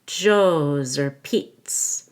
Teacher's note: the Z at the end of Joe's is going to link to or and sound like Zur